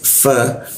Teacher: Bibir bawah bertemu gigi atas. Fa, ada alif dipanjangkan, lalu posisinya dijakun dia.